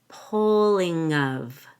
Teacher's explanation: make sure you link pulling to of the NG links to of